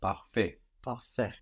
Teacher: And of course that T on the end is silent.